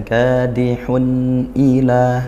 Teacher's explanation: Nun atau tanwin ini ya sama bunyinya nun yaitu tawassud. Aliran suaranya sedang. Jadi tidak kita tekan sampai dipantulkan gini ya, tidak ditekan, dihentak, tidak juga sampai ee dengung, ngalir lepas gitu.